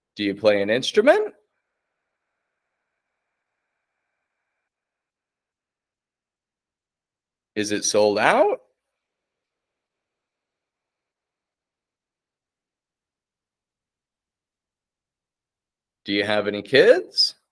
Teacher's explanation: nice and clear on that final word with the rising intonation other words are quick and quiet